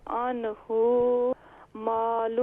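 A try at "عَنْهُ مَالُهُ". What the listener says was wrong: عنہ نہیں ہے، ہا کو شارٹ ساؤنڈ کریں، عنہ مالہ،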